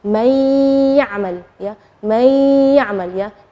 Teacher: Nunnya tidak jelas tapi ada suara dengung gunnahnya. May. Jadi itu namanya idgham. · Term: idgham bi gunnah